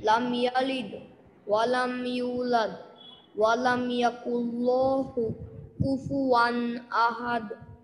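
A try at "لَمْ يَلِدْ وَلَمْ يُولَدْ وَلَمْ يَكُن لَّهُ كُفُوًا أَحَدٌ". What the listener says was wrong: জি, মাশাআল্লাহ।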